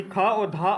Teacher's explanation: ख और ध अल्प प्राण ध्वनि नहीं है